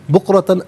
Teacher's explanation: بکرتن میں را پر زبر، را کو پر کر کے پڑھیں گے. تا پر 2 زبر کی تنوین، اسے واو کے ساتھ ملا کر واو کی آواز کو ادا کیا جائے گا.